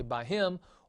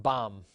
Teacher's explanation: the idea here is that intervocalic hay can sometimes drop · sometimes when hay is between vowels it goes away